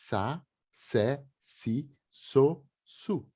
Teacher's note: Tem que arranhar a garganta, esse som. O S é sempre S, é sa, se, si, so, su. Nunca ele se transforma em Z, como em rosso, rosa em português, que a gente transforma o S em Z, em Esperanto jamais.